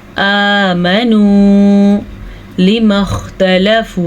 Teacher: खौ को पुर पढ़ेंगे, खौ हमेशा ही पुर पढ़ा जाता है